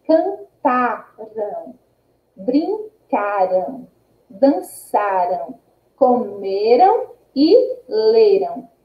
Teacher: a sílaba tônica, ela não corresponde à última sílaba, ela corresponde à penúltima sílaba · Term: paroxítonas